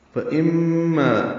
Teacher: فَإِمَّا میم مشدد ہے، اس میں غنہ کریں گے. ما الف مدہ ہے، 2 حرکات لمبا کریں گے.